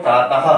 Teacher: तो विसर्ग का उच्चारण जो होता है वो हा की तरह होता है